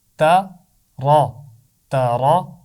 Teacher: تا کو موٹا نہیں کرنا، تا باریک ہے، صرف را کی آواز موٹی ہوگی